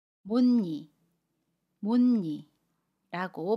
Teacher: 못의 받침 시옷과 이가 만나면 못니라고 발음해요. 받침 시옷은 받침소리 니은으로 모음 이는 니은을 첨가해서 니로 발음합니다. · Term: 니은 첨가